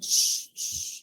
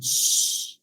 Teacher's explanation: Oclusiva más fricativa, ¿ya? Cuando nosotros articulamos una che, lo primero que hacemos es la interrupción de la salida del aire. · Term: oclusión más fricción